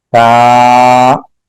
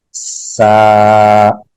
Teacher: ता बगैर सीटी के, सीन सीटी के साथ।